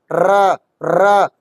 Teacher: जब हम र को बोलते हैं तो हमारी जो जीवा है ना उसमें कंपन होता है। जैसे र तो ऐसे हलती है जैसे कंपन हो रहा हो। · जब हम र को बोलते हैं तो हमारी जीभ क्या होती है? लुढ़क सी जाती है तो र ऐसे हो जाती है ऐसे नब जाती है। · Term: प्रकंपित, लुंठित